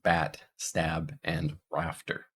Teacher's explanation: this is our low front unrounded LAX vowel as in bat stab and rafter